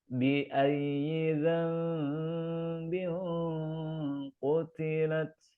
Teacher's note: sini ada Tandun ketemu q ya qf Ini huruf tebal maka ketika dengung masuk ke qaf ini ada unsur ketebalan